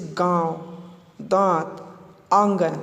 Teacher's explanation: ऐसे स्वरों का उच्चारण नाक और मुंह से होता है। उदाहरण के लिए जैसे गांव, दांत, आंगन, इस प्रकार से। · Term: अनुनासिक स्वर